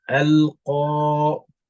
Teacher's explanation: So instead of Qaf have just one count, because the Alif is there together, it's going to make it longer for 2 counts. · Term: elongation